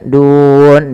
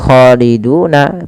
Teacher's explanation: Kemudian dun, di sini ada mad adat disukun, mad yang terjadi karena kita wakaf. Awalnya khaliduna, tapi karena kita wakaf nunnya dimatikan. Nun ini kita namakan dengan nun yang dia sukun arid dan sebelumnya ada huruf mad. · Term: mad arid disukun